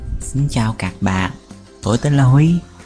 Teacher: The central dialect is noted by the heaviness and emphasis on the low tones.